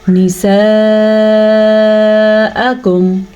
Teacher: مد کا دھیان رکھنا ہے، 4 سیکنڈ تک لمبا کرنا ہے